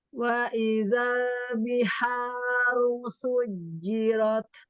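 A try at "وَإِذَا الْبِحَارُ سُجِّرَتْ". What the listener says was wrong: Lebarkan lagi ujung lidah lam. Wa idzal. Lebarkan lagi ya. Upayakan setiap pengucapan lam, terutama yang sukun, ujung lidahnya melebar. Zal gitu ya. Wa idzal.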